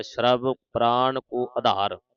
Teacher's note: ਪੈਰ ਚ ਜਿਹੜਾ ਰਾਰਾ ਹੈ ਇਹ ਜਲਦੀ ਨਾਲ ਬੋਲਿਆ ਜਾਵੇਗਾ